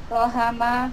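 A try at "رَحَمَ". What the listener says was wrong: roha ha. Bukan roha ya. Roha pendek.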